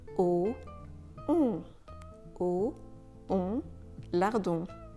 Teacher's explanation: The sound kind of happens at the back of your throat and also at the back of your nose.